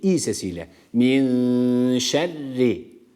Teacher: burada şeddeli olan ra harfi ince okunması gerekiyor